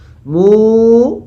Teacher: মু, ঠোঁট গোল হবে এবং টান হবে।